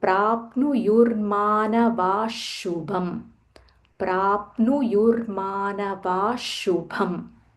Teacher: Visarga followed by sha, we should stress on that sha a little more, like a half sha.